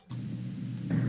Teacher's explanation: what you heard there was hypernasality you heard some imprecise articulation what you didn't hear was a weak and breathy voice